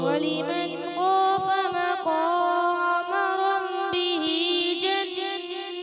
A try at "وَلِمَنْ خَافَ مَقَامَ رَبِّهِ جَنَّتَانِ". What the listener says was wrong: آپ نے کیا ربی یہاں ایسے لگا جیسے ناک کی طرف گئے. ناک میں را کی آواز با کی آواز نہ جائے. وَلِمَنْ خَافَ مَقَامَ رَبِّهِ جَنَّتَانِ